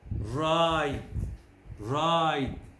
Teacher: the second eye begins with ah but the muscles are slightly tense